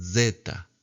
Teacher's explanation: La zeta empieza, en cambio, desde los dientes